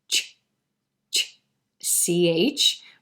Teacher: the tip of the tongue is pressing right there where the alveolar ridge and the palate come together same thing with the j sound also the shh sh and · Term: alveolopalatal